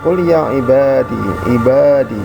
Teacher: Ada qul ya ibadi. Jadi ada ba kemudian ketemu dengan alif, itu mad tabi'i, panjangnya 2 harokat ketika kita baca